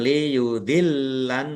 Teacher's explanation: lamnya ada tasdidnya, dibaca double, ditekan dan ditahan biar tampak doublenya